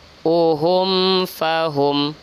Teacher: mim sukun bertemu fa, itu izhar syafawi, maka tidak boleh berdengung. 1 ayun saja.